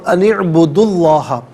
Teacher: اعبدو کی عین کے ساتھ ملائیں گے، عین ساکن کے ساتھ، اور درمیان میں سے الف یعنی حمزہ کو حذف کیا جائے گا